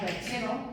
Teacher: Si yo tengo una palabra como perchero, me encuentro con que la fuerza de voz está en la segunda sílaba, empezando por detrás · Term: palabra llana